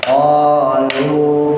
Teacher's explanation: konya panjang, lunya panjang, sama-sama mad tabi'i ya